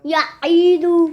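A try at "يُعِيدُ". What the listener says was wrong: ई लंबा नहीं करना या ईदू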